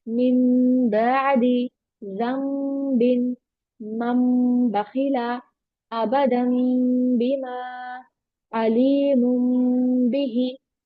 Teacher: नून साकिन और तनवीन के बाद अगर बा आए तो उसको मीम से कन्वर्ट करेंगे। · If after noon sakin or tanween there appears the letter ba, noon sakin or tanween will be changed into meme and will be read with gunna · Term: इकलाब, Iqlab